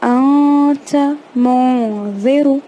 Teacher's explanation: تنوین اور نون ساکن کو ہم آئی این جی ساؤنڈ میں پڑھتے ہیں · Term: اخفا